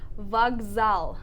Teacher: because the second consonant is ze, the k sounds like a g